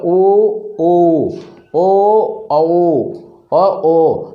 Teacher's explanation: तो हमारे होठों की या मुख की आकृति कैसी बन रही है, वृत्त के समान बन रही है। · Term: वृत्ताकार